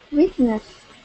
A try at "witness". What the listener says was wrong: So that is pronounced witness, not wheatness. So you are going to make that sound I, not E. So witness. Witness.